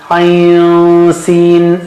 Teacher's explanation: you just have a suppression of noon sound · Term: ikhfa